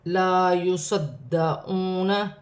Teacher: یہاں الف مدہ بن رہا ہے، ایک الف کی مقدار کھینچ کے پڑھا جائے گا. یہاں پر دال مشدد ہے، لا یصدعون جماؤ کے ساتھ پڑھا جائے گا. واو ساکن سے پہلے پیش ہے تو واو مدہ بنے گی.